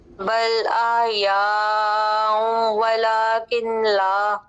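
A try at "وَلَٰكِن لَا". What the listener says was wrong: ولیکن لا نہیں، کاف کے نیچے جو زیر ہے آگے ہم لام کے ساتھ ملائیں گے، نون کو مدغم کریں گے لام میں.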